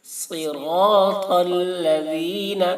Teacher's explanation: صاد را تا تینوں کو پر پڑھیں گے